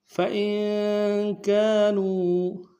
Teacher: فَإِن میں حمزہ کو نون ساکن سے ملانا ہے، نون ساکن میں غنہ کریں گے۔